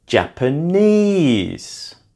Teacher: Japanese is also stressed on the third syllable.